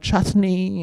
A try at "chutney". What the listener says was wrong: I don't think chutney is pronounced with every single syllable in the word. I think it's just chutney.